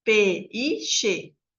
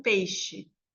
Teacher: peixe não tem três sílabas é peixe são duas sílabas porque o e é uma vogal Ele é bem forte e o i vai ser uma semivogal a gente não fala vou na feira comprar um p i